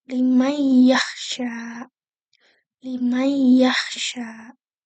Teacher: Nah yang kedua itu adalah idunah naqisah. yaitu masukkan nun sukunnya ke dalam huruf kedua itu dengan mematikan makhraj lisan jadi langsung ke huruf kedua gitu. Tapi makhraj khais yang mempunyai sifat sig gunanya itu tetap diaktifkan.